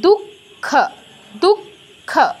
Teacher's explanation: বিসর্গের পর খ থাকায় বিসর্গের জায়গায় আমার খ হসন্ত আসছে